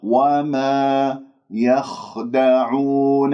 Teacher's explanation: ويجري فيها الصوت فنسمع الخاء مع التفخيم لأنها من حروف الاستعلاء